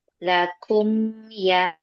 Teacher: Ya, enggak usah ditahan ya. Enggak usah ada ditahan dua harakat gunah. Jangan. Jangan lakum ya. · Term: mim sukun